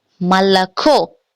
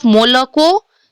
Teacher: o or a is unstressed, then the sound will be a. पहला rule, o और a जब भी unstressed हो तो sound होगा a का.